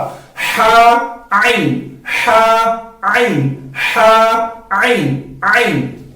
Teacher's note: आइन भी उसी तरह बेआइनी ही अदा करना है जिस तरह हमने हा को अदा किया, यानी हलक का जो बीच वाला हिस्सा है वहां से हम आइन को अदा करेंगे